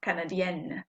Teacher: the feminine i am pronouncing the n it's not nasal anymore